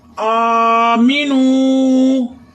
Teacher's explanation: الف کو ایک کھڑی کے برابر لمبا کرنا ہے